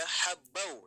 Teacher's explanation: nun mati atau tanwinnya kalau secara pendengaran tidak dibaca, jadi langsung ke wawunya. Contoh di sini kan habban wa nabatan ya. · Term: idgham